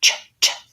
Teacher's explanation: You can think about the T to help you say your CH accurately, that I'm saying ch. My tongue lifts up to the T position and then pushes out for the ch. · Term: CH sound